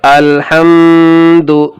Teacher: میم کے اوپر جزم ہے، اسے بھی پیچھے والے حرف سے ملا کر پڑھیں گے، اور ایک قاعدہ یہ ہو رہا ہے کہ میم ساکن کے بعد نہ تو با ہے اور نہ میم ہے، اس لیے یہاں پر اظہار شفوی ہوگا، یعنی یہاں پر غنہ اخفا کچھ بھی نہیں ہوگا، اس لیے یہاں پر ناک میں آواز نہیں جانی چاہیے